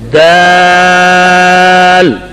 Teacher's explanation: درمیان میں جو الف ہے اس کو ٹیڑھا نہیں پڑھیں گے ہمارے کے ساتھ، دیل، یہ آواز غلط ہے۔